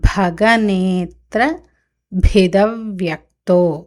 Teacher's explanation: అక్కడ భీ మహాప్రాణ, మొదట్లో భా మహాప్రాణ, తర్వాత భీ మహాప్రాణ